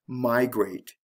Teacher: the stress is on the first syllable with migrate